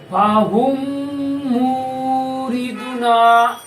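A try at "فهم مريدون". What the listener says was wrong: মাশাআল্লাহ, গুড।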